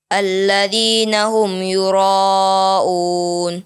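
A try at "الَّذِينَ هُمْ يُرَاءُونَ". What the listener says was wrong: Ya, dipanjangkan lagi kalau bisa. Alladzi yura dengan un disamakan panjangnya. Alladzina hum yura'un.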